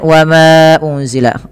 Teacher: kita hukumi dengan bacaan mad jaiz munfasil dipanjangkan hanya 4 harakat